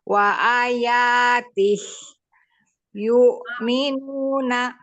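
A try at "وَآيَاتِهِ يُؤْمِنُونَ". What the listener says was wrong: Nggak boleh berhenti gitu dong. Ayo. Hi-nya dipanjangin. Wa ayatihi yu'minun. Hi-nya 2 harokat.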